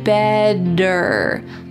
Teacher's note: In American English, a T that is surrounded by vowels or vowel sounds will change to a D.